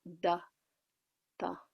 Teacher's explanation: every single D and T in this chant, tongue is between the teeth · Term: tongue between the teeth